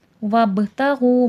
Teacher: وب میں قلقلہ ہوگا، قلقلے میں آواز پلٹ کر سنائی دیتی ہے